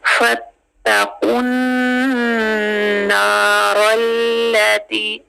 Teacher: कॉफ direct जाके नून से मिल जाएगा और नून टू हरकत तक होल्ड होगा। कैसे देखें, फत्तकुन नारल्लती, रल्ला, लाम को थोड़ा सा होल्ड करेंगे और फिर उसकी हरकत देखेंगे कि कौन सी है।